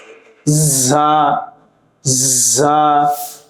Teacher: এই হরফটি বলার সময় খুবই শক্ত হয় এবং বাতাস জারি থাকে।